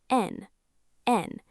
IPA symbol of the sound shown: ən